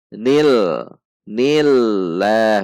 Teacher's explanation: Nun kasroh masuk ke alif lam jalalah. Alif lam jalalah didahului oleh kasroh, maka dibaca tarqiq atau tipis.